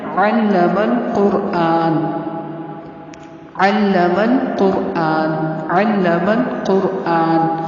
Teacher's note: قاف اور را کو پر پڑھنا ہے